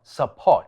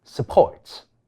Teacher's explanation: 第1音節係非重音，應該弱化為▁schwa